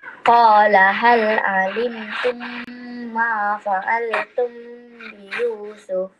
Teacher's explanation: Mim mati bertemu ba. Ikhfa syafawi kena dengung juga dua harakat.